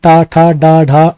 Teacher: टा वर्ग, जिसमें टा ठा डा ढा अड़ा आते हैं, और रा तथा सा षटकोण वाला जो सा है ये मूर्धन्य ध्वनियां कहलाती हैं।